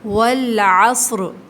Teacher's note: واو کو لام کے ساتھ ملا کے جب لام ساکن ہو تھوڑا سا ہولڈ کرتے ہیں